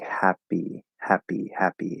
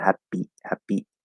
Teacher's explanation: even the weak p in english we don't want to have as much breath but there's still a little bit of flow there